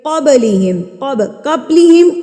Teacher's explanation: قب آواز کو روکنا نہیں ہے، اپنے مخرج کے ساتھ یہ ٹکرائے گا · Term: قلقلہ